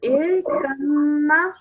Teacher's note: you ignore the sound of the ba and you straight away join the kaf to the mim. But then you also must make sure that you have the gunna sound because it is a mim mushaddad.